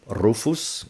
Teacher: the letter R is pronounced with the trill that is common to Spanish and Scottish